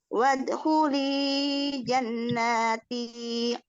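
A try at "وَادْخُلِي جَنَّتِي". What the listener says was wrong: Jannati. Nanya pendek. Jannati. Langsung ke ti.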